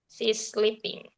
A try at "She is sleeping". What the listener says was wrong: Ya, sis, bukan si is ya. Kalau nomor dua si is sleeping, nomor dua sis ya, kayak sister, sis ya, sis sleeping, sis sleeping ya.